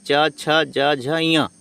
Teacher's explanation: तो च वर्ग का उच्चारण स्थान, है ना, इन वर्णों का उच्चारण स्थान तालु है ना।